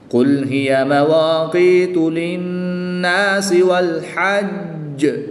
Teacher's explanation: نون مشدد میں غنہ کر کے پڑھیں گے